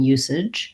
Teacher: We have first syllable stress in usage. And then our AGE just says the ij sound.